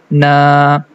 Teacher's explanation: we are going to stretch the fatha sound for two count. This is a long sound, na, like that. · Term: standing fatha